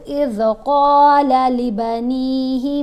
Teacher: قاف کو ہم نے موٹا پڑھا اور لمبا بھی پڑھا